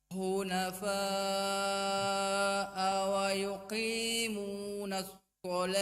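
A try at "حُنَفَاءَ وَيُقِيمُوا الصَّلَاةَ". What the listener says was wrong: Nah, ini tidak ada nunnya. Langsung wa yuqimus shalah. Bukan wa yuqimunas shalah.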